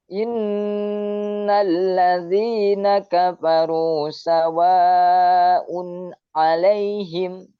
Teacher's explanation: ketika itu nun ya di tasdid, bukan disukun, di tasdid, maka di sana akan keluar daripada nun itu adalah namanya gunnah